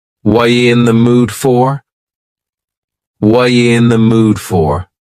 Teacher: The word are is gone, and the word you has been reduced to ya. So when we link together, what and you, super fast. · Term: reduction